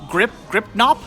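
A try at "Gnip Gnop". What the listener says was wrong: G is silent.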